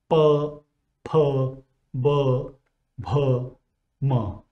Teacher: While articulating these sounds, the two lips, upper and lower lip, meet. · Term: bilabial sounds